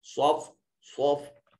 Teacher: सिफत इस्तिला की वजह से इसको मुफख्खम अदा किया जाएगा। वाव के बाद अलिफ, अलिफ खाली अज़ हरकत, मा कबल मफ्तू, अलिफ मद्दा, इसको थोड़ा सा लंबा करेंगे।